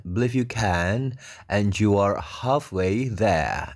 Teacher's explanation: r-nya hilang belakang karena there itu kan terakhir